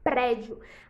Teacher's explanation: a penúltima sílaba está acentuada então é uma paroxítona